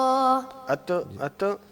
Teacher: ता में जो सिफत होती है हमस की उसका मतलब ये होता है कि सांस जो है वो जारी रहेगा तो इसमें हल्का सा जो है ना सांस को जारी रखते